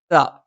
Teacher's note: നാവിന്റെ അറ്റം മേലെ മുൻപല്ലിന്റെ മുരട്ടിലാണ്